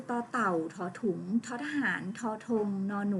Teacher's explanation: เสียงจะออกจากฐานฟันนะคะ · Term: ทันตะ